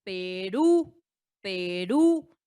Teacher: Ahí está la sílaba tónica. Recae en la última y como vemos en qué termina en U. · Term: palabra aguda